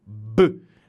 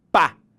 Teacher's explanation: Usar meus lábios novamente. A diferença entre B e P é porque um é sonoro, B. O P é surdo.